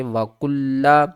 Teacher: کاف کو لام سے ملائیں گے، لام کے اوپر تشدید ہے سختی کریں گے